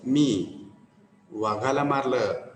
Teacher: आता दुसऱ्या वेळेस मी वाघाला मारलं, कशावर भर दिला? वाघाला.